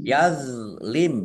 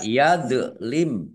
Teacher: do sukun bukan kolkolah, jangan dipantulkan. Jangan dibaca yadlim, ya jangan.